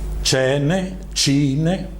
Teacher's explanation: il suon palatale, formato de C, denant de vocal E e I